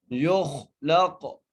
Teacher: یا کو خا سے اور خا کو موٹا کر کے پڑھنا ہے